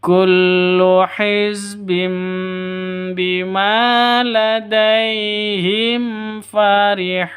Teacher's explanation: Himfarihun itu disentak, itu tidak diperbolehkan. Farihun itu panjang, bisa dua, empat, atau enam hitungan karena Mad Arid Lissukun. · Farihun ini panjang boleh 2, boleh 4, boleh 6 ketukan karena mad arid li sukun.